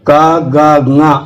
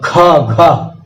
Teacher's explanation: और दूसरा और चौथा महाप्राण में ज्यादा ताकत लगानी पड़ती है। क, ग, ङ अल्प प्राण और ख, घ इसमें ज्यादा लगानी पड़ती है।